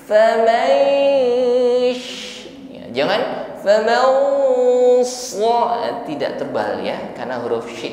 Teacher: [Musik] mengucapkan nun sukun kita samarkan pada huruf shid ikhfa ya ketika proses menyamarkan Nun dan Shin ini ada bunyi dengung ya dengungnya tipis saja